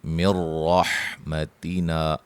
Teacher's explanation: نون ساکن کا ادغام ہے لیکن غنہ کے بغیر ہے، را کو موٹا ادا کریں گے